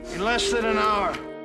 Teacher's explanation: not only are they reduced, but they also morph together and sound like one word, thanen. Furthermore, the word hour is a content word.